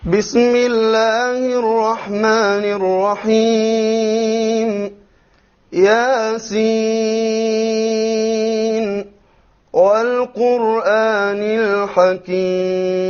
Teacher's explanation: So we see he did a mad of 5 on Al-Hakim.